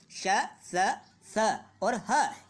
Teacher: ऊष्म व्यंजनों के उच्चारण में वायु धीरे धीरे रगड़ खाती हुई बाहर निकल जाती है, इन्हें ऊष्म या घर्षक व्यंजन कहते हैं।